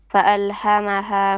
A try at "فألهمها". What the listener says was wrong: No. فألهمها. Both ha is bottom throat.